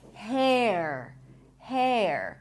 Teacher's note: It's an R diphthong where you pronounce a full eh and then you transition to the R.